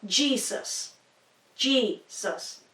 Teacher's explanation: in English you put the emphasis on the beginning of the word